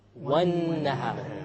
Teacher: We didn't say wal-nahar. We dropped the lam because it is a solar letter.